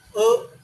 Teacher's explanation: अ बोलने से हमारे कंठ से हवा ऊपर आने जैसा लगता है।